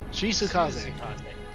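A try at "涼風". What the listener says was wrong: There's no she, it's Suzu.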